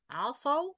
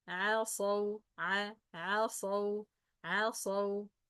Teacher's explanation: عندما تأتي العين بجانب حرف الصاد المفخمة بتنطق مفخمة، وهي ليست مفخمة، هي مرققة. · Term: العين مرققة